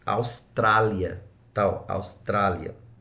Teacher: Se ela está acentuada na penúltima, nós temos aqui uma paroxítona.